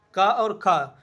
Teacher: अकुह विसर्जनीय नाम कंठा, इस सूत्र के अंतर्गत आ, का वर्ग, हा और विसर्ग, इनका उच्चारण स्थान कंठ होता है। तो का वर्ग के अंतर्गत आते हैं का, खा, इसलिए ये कंठ वर्ण है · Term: कंठ ध्वनि